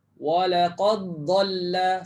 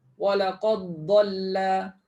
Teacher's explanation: Dal tak ada mati, tanda mati, depannya ada sadu, fahamlah di sini maknanya tuan-tuan dan puan-puan jangan bunyikan dal lagi. Tapi terus sebut huruf dad.